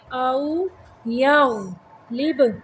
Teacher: غین کو موٹا پڑھیں گے، با کو قلقلہ کریں گے